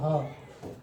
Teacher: ह को हम क्या कहते हैं, कंठ वर्ण या काकल्य वर्ण के नाम से हम इसको जानते हैं।